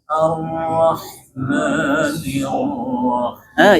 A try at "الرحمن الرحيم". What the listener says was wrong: Yang nirnya maju lagi tuh.